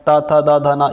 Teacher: त वर्ग जो आ जाएगा त थ द ध न ये दांतों को स्पर्श करते हैं